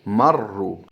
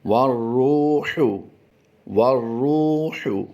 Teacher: را مشدد پر اگر پیش ہو تو را پر پڑھی جاتی ہے، یعنی را تفخیم کے احکام میں آئے گی، را مفخم ہو جائے گی